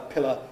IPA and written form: ˈpɪlə (pillar)